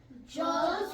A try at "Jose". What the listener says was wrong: The J is silent.